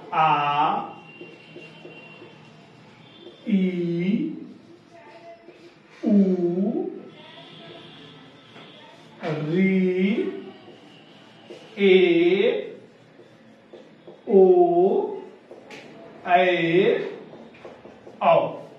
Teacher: दीर्घ स्वर में ह्रस्व स्वर से दुगुना समय लगता है।